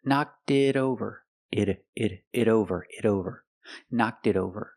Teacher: the T in it is a fast D because it's between vowels. So together, knocked it over.